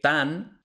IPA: tam